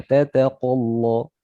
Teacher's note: ya taknya tipis, qafnya tebal. Tata qalla, lamnya juga jangan sampai ikut tebal ya.